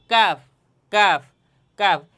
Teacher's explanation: কাফ হরফটিও উচ্চারণের স্থান হচ্ছে তার থেকে একটু সামনে আগাইয়া, যা কফের স্থান থেকে একটু সামনে আগাইয়া তথা এই জিব্বার গোড়া থেকে একটু সামনে আগাইয়া কাফ উচ্চারণ করলে আপনারা বুঝতে পারবেন যে কীভাবে উচ্চারণ হইতেছে কাফ কাফ।